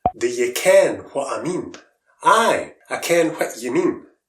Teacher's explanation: In many parts of Scotland, 'you' is pronounced 'ye', 'I' is pronounced 'ah', and 'what' is pronounced 'whit'.